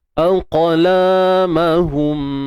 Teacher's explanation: Pastikan kita lantunkan huruf qaf ini dan sertakan juga sifat tebalnya isti'la.